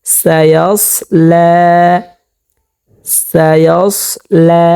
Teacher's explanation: প্রিয় দর্শক, আমরা এখানে লামের উপরে খাড়া জবর পেয়েছি, সেক্ষেত্রে আমরা এখানে লামকে একালিক পরিমাণ টানিয়া পড়ব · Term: মদ্দে তবাই